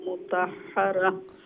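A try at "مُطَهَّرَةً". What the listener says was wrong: মুতাহহারা হা না এটা ছোট হা হা মুতাহহারা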